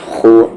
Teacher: خا کا مخرج یعنی کہ ایگزٹ اپر تھروٹ ہے